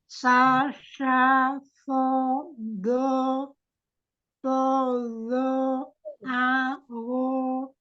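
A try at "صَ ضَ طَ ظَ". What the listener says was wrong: Kurang dibuka ya. Kurang dibuka semua untuk huruf tebal-tebalnya itu. So, bo, to, vo, a, ro. Jangan pakai bibir, Wi.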